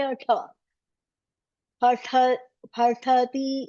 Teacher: It's not labial, it's tavarga. It's like a murdanya. The tongue should hit the roof.